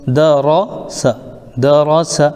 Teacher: را کو پر پڑھنا ہے اور سین کو سیٹی کے ساتھ پڑھنا ہے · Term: سیٹی کی آواز